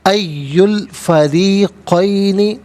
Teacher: فریقین را کے نیچے زیر ہے، را کو باریک کر کے پڑھیں گے